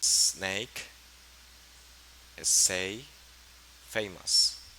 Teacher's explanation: they are alveolar the same place of articulation so the first one is voiceless snake say famous then we